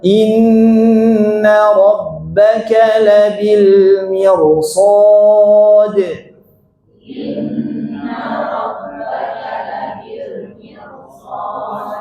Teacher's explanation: karena bertemu huruf tebal, lihat huruf shad di depannya, maka ro-nya berubah menjadi tebal